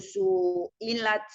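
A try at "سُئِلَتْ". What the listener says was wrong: Sunya pendekin.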